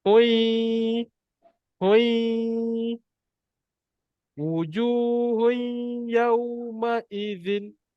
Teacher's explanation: Kalau sebelum ni bunyi dia hun, Kita masukkan bunyi N tu kepada huruf ya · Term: masuk dan dengung